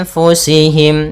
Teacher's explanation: Kemudian anfusihim ada nun mati bertemu fa. Hukum tajwidnya ikhfa, caranya adalah kita samarkan nun ke fa.